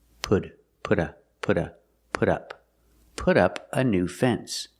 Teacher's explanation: the T in put changes to a fast D.